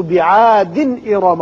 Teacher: تنوین کی وجہ سے آگے حمزہ ہے، اظہار حلقی ہوگا